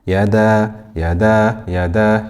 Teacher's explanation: We have a fatha followed by an alif. This is mad tabi'i. This is stretched for 2 harakat.